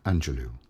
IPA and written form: ˈændʒəloʊ (Angelou)